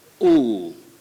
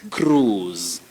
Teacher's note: But this word, the I is silent. So the sound O becomes elongated. Now it's a long sound, ooh. So you say cruise.